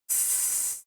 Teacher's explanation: garganta e faz só o som do S ó reparou que o s não vibra porém tem som tem ruído mas não tem voz